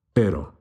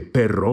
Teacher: we have a light single flipped r